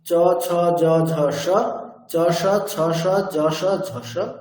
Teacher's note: তালব্যস্যের উচ্চারণ স্থান তালু